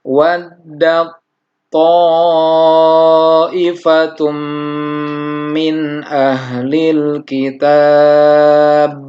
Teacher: tak sukunnya tidak mendesis, tidak dihameskan karena melebur ke huruf to. Nah, ini pun adalah termasuk dari idgham mutajanisain.